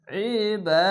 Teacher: দুই জাবার পাবেন একটি অতিরিক্ত আলিফ আসবে এটি অবশ্যই খেয়াল রাখবেন আইনটিকে মোটা করে গলা চিপে করবেন